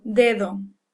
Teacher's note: Notice that between vowels, if you were to analyze how I said that word dedo, the first one's a hard D, pretty much like English. The second D is kind of a real soft sound, so it sounds almost like the TH in the.